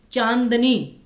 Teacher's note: चांदनी में न पे फोकस आया, नाक से ज्यादा आवाज निकली, तो इसलिए यहाँ पे आपका अनुस्वार आएगा।